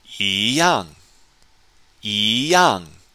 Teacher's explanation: normally pronounced first tone all by itself switches to Second tone because of the tone Sandy rule it's followed by a fourth